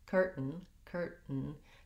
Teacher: The other thing with the word curtain, curtain, the way most Americans will say it is that they are going to stop that T. They're not going to say curtain, curtain with a pronounced T sound, or curtain with a flap T. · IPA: /ˈkɝtn̩/